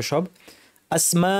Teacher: এখানে আলিফের পর হামজা আছে একই শব্দে মাদ মুত্তাসিল দুই আলিফ